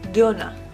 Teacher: Donut equals dona you put the accent or the emphasis on the second syllable